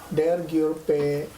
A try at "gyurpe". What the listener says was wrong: Cured, cured, cured. Not an English G.